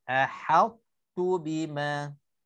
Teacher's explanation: muncung untuk ta sekejap tanpa qalqalah dan pergi kepada tu.